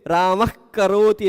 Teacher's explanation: विसर्ग बोलते समय जीभ के जड़ पर हवा का प्रेशर पड़ता है। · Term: जीहवा मूली